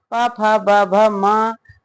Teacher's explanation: दोनों ओठों के स्पर्श से बोले जाने वाले वर्ण ओष वर्ण कहलाते हैं